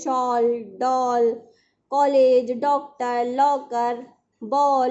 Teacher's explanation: आ ओ के बीच का ध्वनि है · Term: आगत ध्वनि